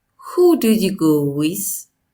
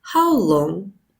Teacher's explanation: the low rising tone on the question word is also common